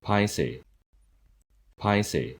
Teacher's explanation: パは息を思い切り破裂させる有気音